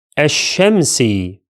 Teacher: That's wrong because the lamb here is silent and the sheen is doubled. As we learned in the previous lesson, the definite article begins with which becomes silent in the middle of connected speech.